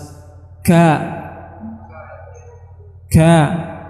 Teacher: yaitu kita merapatkan makhrajnya dulu baru setelah suara keluar saat itulah keluar sifat hams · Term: huruf Kaf